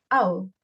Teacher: composed of the closing diphthong ow and the schwa sound as in the word hour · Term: triphthong